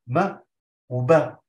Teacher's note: النيم والباء مخرجهم واحد يخرج من الشفتين لما اقول ما وبه لو لاحظنا انه الحرفين يخرجون من الشفتين